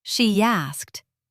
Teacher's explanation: The E in she links to the A in asked with a Y sound. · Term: bridges